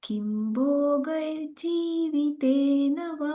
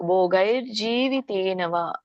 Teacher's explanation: ನೀವಿಲ್ಲಿ ಎರಡನೇ ಲೈನ್ಲ್ಲಿ ಭೋಗೈರ್ ಅಂತ ಹೇಳಬೇಕು ರ ಬರಬೇಕು ಅಲ್ಲಿ ಭೋಗೈರ್ ಜಿ ಆಮೇಲೆ ಜಿ ಬರಬೇಕು ಭೋಗೈರ್ ಜೀವಿತೇನವ ಅಂತ ಹೇಳಬೇಕು ಆಮೇಲೆ ಇಲ್ಲಿ